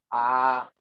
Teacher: आ में केवल द्विमात्रिक यानी 2 सेकंड का समय लगा